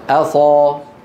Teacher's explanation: همزه مرققه بعدها ايه صاد مفخمه